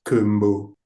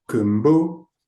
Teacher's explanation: raising my pitch on the second part of the word kumbo